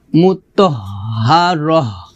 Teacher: আর হার উচ্চারণটা আসবে খলকের শুরু থেকে